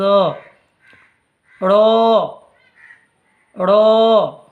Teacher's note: জিভের উল্টো পিঠ ওপরের তালুর সাথে লাগিয়ে উচ্চারিত হয়